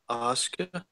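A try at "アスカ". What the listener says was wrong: That was a little closer. I think you threw an H in there somewhere.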